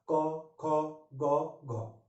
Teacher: कंठ से निकलती है ध्वनिया क, ख, ग, घ, ठीक है। मतलब हमारी जो जिह्वा होती है, जिह्वा का लास्ट हिस्सा वो हमको हमारे कंठ को स्पर्श करता है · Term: कंठ ध्वनिया